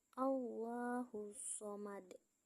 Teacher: hukum tajwidnya adalah tafkhim karena lafaz Allah diawali harakat fathah, dibaca tebal. As-somad, alif lam syamsiyah karena alif lam bertemu huruf syamsiyah yaitu shod, bunyi alif lam melebur langsung ke huruf shod.